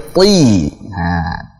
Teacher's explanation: Ta-nya tebal, kasrahnya jelas. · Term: ta tebal